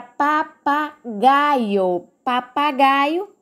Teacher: Papagaio, o gai é a sílaba mais forte, então é uma palavra paroxítona.